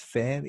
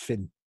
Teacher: Fijn in het Engels, fijn, iets wat meer diftongeert dan in het Zwijnaards